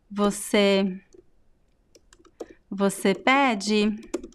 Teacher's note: the stress is at the beginning because most words in Portuguese they have the second to last syllable stress